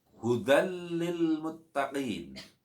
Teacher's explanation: huruf bacaan dal dilebur kepada bacaan lam, hudal masuk, disertai tanpa mendengung. Tidak boleh dibaca mendengung dan harus dibaca jelas. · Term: idgham bila gunnah